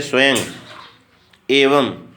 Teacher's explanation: संस्कृत शब्दों के अंत में जो अनुस्वार आता है उसका उच्चारण म हलंत के समान होता है